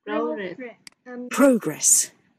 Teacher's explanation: Nhớ dấu sắc ở đầu nha